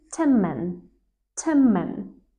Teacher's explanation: The n becomes a m sound. It happens because your mouth is just getting ready for the next sound, and so it shifts naturally. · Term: assimilation